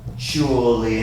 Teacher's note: This is an interesting word because this T sounds like a CH. That T sound in this word sounds like a CH, and you will notice that in many English words where you have the T and the U following it.